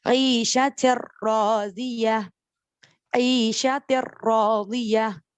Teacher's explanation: نون کو اسکپ کیا, را کو پک کیا اور ملا دیا وداؤٹ غنہ.